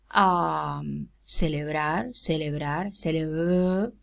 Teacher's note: Celebrar, celebrar, celebrar, as a fricative. There's no contact between my lips. There's friction, right? So, as a fricative, because it occurs between a vowel and a consonant.